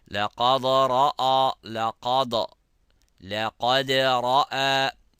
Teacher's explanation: لقى is full mouth, so it goes up, and then the ra goes high, full mouth, but the dal does not. Also, don't forget the qalqala. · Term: dal not to be mufakham